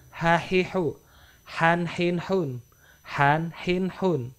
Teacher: dia langsung dari pita suara keluar tanpa ada halangan.